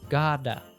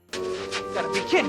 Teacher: often drop auxiliary verbs like have furthermore got to becomes Gada notice the flap T sound Gada and we drop the G and ing words like kidding